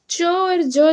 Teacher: च और ज जो है तालव्य वर्ण के अंतर्गत आता है